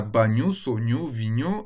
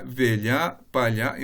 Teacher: En portugais du Nord, on observe qu'on a des consonnes palatales, telles que le ñ et le ly